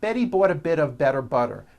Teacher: notice that you do not hear any t sounds they're only d's which are voiced